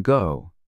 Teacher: start by making the K sound, as in kite. But then add some voice to it so that it sounds more like G